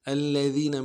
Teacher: الذین میں ذال کو باریک کرنا ہے، یا مدہ ہے کھینچنا ہے